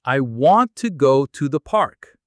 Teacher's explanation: Notice how want is strong and how to is softer almost like to.